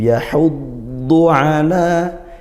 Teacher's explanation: huruf tebal. Tebal apa? Isti'la, pangkal lidah naik. Itbaq sampai hampir menutupi rongga mulut seperti itu karena naiknya pangkal lidah seperti itu.